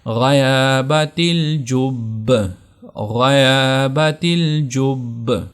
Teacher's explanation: تو وقف کی صورت میں صرف یہ زیر گرے گی، یعنی وقف کی صورت میں زیر کو نہیں پڑھا جائے گا، لیکن یہ جو شدہ ہے اس شدہ کی سختی برقرار رہے گی